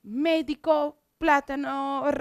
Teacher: são palavras têm a antepenúltima mais forte